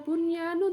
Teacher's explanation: tetap nun sukunnya dibaca izhar atau jelas karena nun sukun bertemu dengan ya dalam satu kata